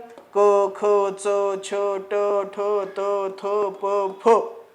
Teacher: कठोर व्यंजनांचा उच्चार करतेवेळी नाद किंवा ध्वनी निर्माण होत नाही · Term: अघोष व्यंजन